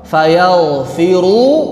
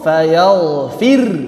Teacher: Kalau wasal tebal. Kalau sukun fayaghfir, tipis. Kalau raum tipis tebal.